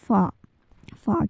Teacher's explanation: ऊपर वाले दो दांतों के सिरे और होट के अंदरूनी हिस्से के मिलने से यानी ऊपर वाले जो दो दांत है आपके चपटे उसके जो